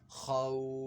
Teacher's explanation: تو یہاں پہ مد لین عارض کا قاعدہ ہوگا، تو اس کو 2 حرکات 4 حرکات یا 6 حرکات کی مقدار تک کھینچ کر پڑھ سکتے ہیں